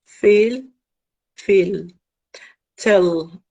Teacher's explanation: dark L occurs in a final position